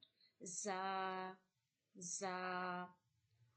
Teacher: Tip your tongue to the edges of only upper two front teeth, and this is from the middle of upper and bottom teeth, and this is read from the whistle sound